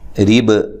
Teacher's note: را کو باریک پڑھنا ہے، وقف کی صورت میں با پہ خوب قلقلہ کرنا ہے۔